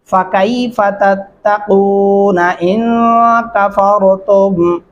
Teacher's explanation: را کو موٹا اور پر کر کے پڑھیں گے